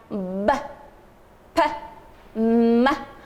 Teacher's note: is bable sounds uh in this process while making bable consonants the two lips press together